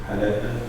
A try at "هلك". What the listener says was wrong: Not ha. هلك.